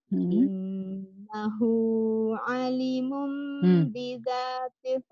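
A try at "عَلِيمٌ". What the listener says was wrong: Ali, linya panjang.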